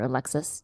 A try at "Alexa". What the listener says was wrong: I think it's Alexa. You said Alexis like Alexis Carrington from Dynasty. No, it's not Alexis. It's Alexa, I think.